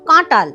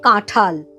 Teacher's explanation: এই যে টটা ঠ হয়ে গেল, মহাপ্রাণ ধ্বনিতে পরিণত হলো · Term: মহাপ্রাণী ভবন